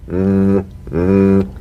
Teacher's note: slip the rim of the tongue between the teeth and sing feeling a buzz or vibration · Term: voiced th